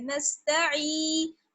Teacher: नून को सीन से मिलाएंगे, नून सीन जबर नस, ता जबर ता, नस्ता, आइन या ज़ेर ई। यहाँ पर देखिए या मद्दा है, यानी या साकिन से पहले जेर है इसलिए थोड़ा सा खींचेंगे। अगर या साकिन से पहले जबर होता है तो बिल्कुल नहीं खींचते हैं, लेकिन जेर है तो इसलिए खींचेंगे।